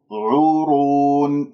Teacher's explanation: العين والراء مضمومتان، عورون، الراء مفخمة، لماذا؟ لأنها مضمومة، لا تجعل غنة في الواو